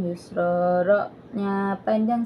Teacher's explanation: jika tanwin Isim mansub diwaqafkan pada Alif maka harus dipanjangkan dinamakan Mad Iwat